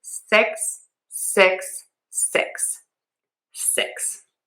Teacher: my mouth is a little more closed and my tongue is just behind my top teeth for this vowel.